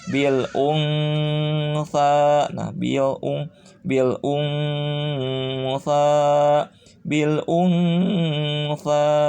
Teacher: Jadi harus disamarkan nunnya dan pakai dengungan bacanya. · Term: ikhfa